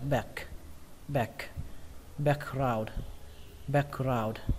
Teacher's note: Ở đây cái từ back các bạn có thể chuyển thành âm A bẹt, nghĩa là giữa âm A và âm E. Có thể đọc là back, back, background, background.